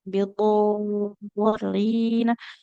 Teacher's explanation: panjang huruf dotnya adalah 6 harokat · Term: mat lazim mutsaqal kilmi